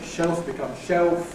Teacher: Dark L [ ɫ ] goes to [ o ], ‘shelf’ [ ʃeɫf ] becomes [ ʃeof ] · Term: L vocalization